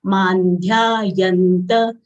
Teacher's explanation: Anuswar sound is half na as it is followed by dha of dental varga.